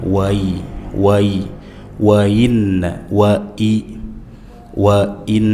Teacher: nun bertasydid dibaca dengan gunnah, dengung ditahan